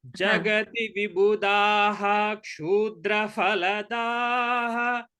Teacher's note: The Visarga should be chanted completely before Ksha.